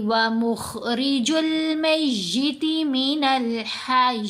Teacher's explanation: تو یہاں ہم پڑھیں گے یخرج الحی من المیت ومخرج المیت من الحی، حی نہیں کرنا، یا کے نیچے زیر نہیں پڑھیں گے لیکن ہا کو یا سے ملا کر پڑھیں گے